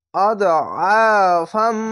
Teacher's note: আইনটিকে মোটা করে গলা চিপে পড়বেন একটু। এখানে ঈদগামে বা গুন্না হামজা দদ জবর আদ আইন আলি জবর অ আদ অ ফা মিম জবর ফাম।